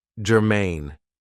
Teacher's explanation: this is two syllables and the stress is on the second syllable · So, the first adjective I have for you is germane. Now, this is 2 syllables, and the stress is on the second syllable, germane. It means that something is relevant, that it is closely related to something else.